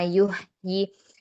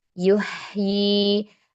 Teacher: Biasanya di sini baca hak sukunnya kurang terlihat ya rokhwahnya. Diberikan sifat rokhwah pada hak sukun. Dan kemudian hati-hati jangan tertukar dengan hak.